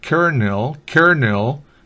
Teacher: la L, como en muy pocos otros casos, muy pocas excepciones, se pronuncia R en este caso expresamente